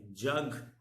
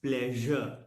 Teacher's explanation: Then we have palato-alveolar. Either tip or tip and blade, both of the tongue are the active articulators, and then we have teeth ridge and hard palate as the passive articulators